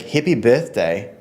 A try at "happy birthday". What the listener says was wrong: Happy birthday. Hippie birthday, it sounds like you're saying.